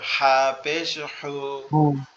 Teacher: প্রথম হাটা একটু গলা চেপে আওয়াজ হবে